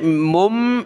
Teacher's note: میم کو میم کے ساتھ ملایا، ناک میں آواز پیدا کی